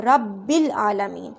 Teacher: یہ جو حمزہ وصلی ہے نا، یہ کلام کے درمیان میں سکپ ہو جاتا ہے، یعنی لکھا ضرور ہوتا ہے لیکن پڑھا نہیں جاتا ہے